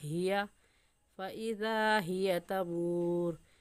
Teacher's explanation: ہا حلق کا آخر جو سینے کی طرف ہے وہاں سے نکلتی ہے تو اس کو صاف اور واضح کر کے پڑھنا، ہیا فَإِذَا هِيَ تَمُورُ۔